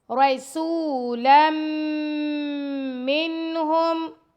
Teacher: لام کو میم سے ملائیں گے، لام 2 زبر میم، لم، غنہ کریں گے، میم پر تشدید ہے۔